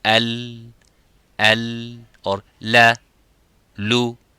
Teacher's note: on both sides, the air is going and flowing out to produce that sound of lam